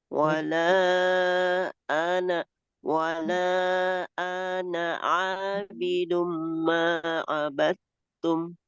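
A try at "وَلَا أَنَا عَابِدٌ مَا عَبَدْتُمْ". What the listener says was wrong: masih panjang Ibu baca huruf A-nya. Dia dibaca pendek. Wala ana. Coba kita lihat di situ A yang ada hamzanya itu, Ibu. Setelah huruf wala.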